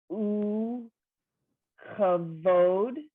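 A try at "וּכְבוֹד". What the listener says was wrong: So it's uchvod. The u and the ch go together.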